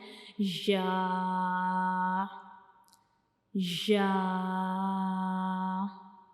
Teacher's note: और इन दोनों का मखरज भी सेम है कि जब हम इन दोनों या को पढ़ते हैं तो हमारी जुबान का जो दरमियान वाला हिस्सा है वो ऊपर की तरफ उठता है लेकिन हमारे मुंह का जो ऊपर वाला हिस्सा है उसके साथ बिल्कुल टच नहीं करता